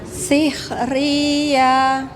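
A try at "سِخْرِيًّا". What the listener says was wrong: Akan ditekan dikit Ibu. Sikhriyah.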